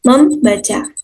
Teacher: yang pada mulanya tidak ada misalnya dalam proses pengimbuan prefiks me pada dasar baca akan memunculkan bunyi sengau m yang semulanya tidak ada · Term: pemunculan fonem